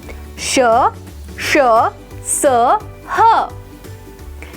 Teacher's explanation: इन वर्णों के उच्चारण में हवा के रगड़ खाने से मुख में गर्मी ऊष्मा उत्पन्न होती है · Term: ऊष्म व्यंजन